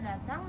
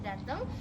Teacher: Kesalahan bunyi pada kata datang yang diucapkan menjadi dateng, yaitu perubahan fonem a menjadi fonem e